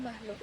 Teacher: makhluk itu diucapkan dengan tekanan lebih di bagian belakang mulut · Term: velarisasi